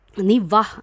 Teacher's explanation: നീ വാ എന്ന് പറയുമ്പോഴത്തേക്കും അവിടെയും സ്ട്രെസ്സ് കൊടുക്കുന്നത് രണ്ടാമത് വരുന്ന സിലബിളിലാണ്.